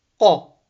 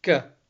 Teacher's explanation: Makhraj is only slightly different. Qaf is full mouth, kaf is empty mouth. So qaf all the way from the back of the mouth.